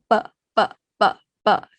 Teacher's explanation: no air coming out, unaspirated